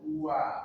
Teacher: dua bibir atas bawah dibulatkan, dimonyongkan. Wa, pastikan mulut monyong. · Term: wawu